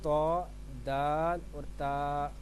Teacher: जुबान की नोक और ऊपर के दांतों की जड़ से अदा होता है